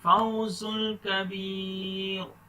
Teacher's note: زا پر سیٹی کا ساؤنڈ آنا چاہیے.